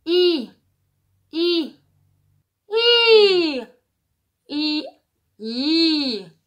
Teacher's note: Et en fait, c'est la langue qui va se pousser en avant, qui va faire le I